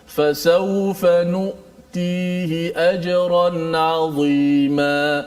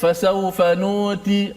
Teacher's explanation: Suara kita bila menyebut hamzah tu dia tertahan. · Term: suara tertahan